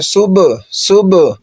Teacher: با پر جزم ہے اور قلقلہ کریں گے